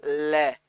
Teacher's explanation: तो ले जब आप बोलते हो ना तो आपकी जीभ जो है वो दांतों से चिपक जाती है, ले। तो जीभ दांतों से चिपकी तो अंदर से जो वायु आ रही है वो रुक गई, क्योंकि जीभ दांतों से चिपक ली तो उसने मार्ग रोक लिया वायु का। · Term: पार्श्विक व्यंजन